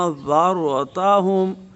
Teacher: انذرتہم دونوں حمزے جو ہے نا صاف صاف ادا ہوں، انذرتہم، را پر ہو جائے گا اور نون ساکن پر اخفاء ہوگا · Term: را ساکنہ